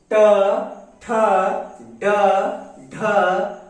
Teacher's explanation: उच्चारण की दृष्टि से ठ मूर्धन्य ध्वनि है